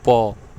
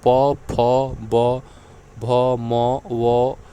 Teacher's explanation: इन अक्षरों के उच्चारण में दोनों ओष्ठों का प्रयोग होता है। जैसे आप खुद बोल के देखिए प, तो आपके दोनों ओष्ठ सट जा रहे हैं, प, फ, ब, भ, म, व, उ, बड़ा ऊ, ठीक है। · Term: द्योष्ठय